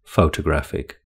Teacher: The third syllable has the main stress in the word photographic.